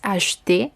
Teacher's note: la E queda en medio del verbo en infinitivo, es una E muy débil